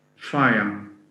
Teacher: So it would be a f sound, the diphthong I, and a schwa. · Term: triphthong